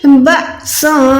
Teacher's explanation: یہاں پر ہم نے حمزہ کو جھٹکا دے کے پڑھنا ہے